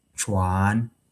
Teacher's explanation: So, this chuan for wearing, it is flat tone. And if it changes to the rising tone, then it will be chuan.